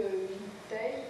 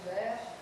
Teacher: Alors le E caduc, il est à peine prononcé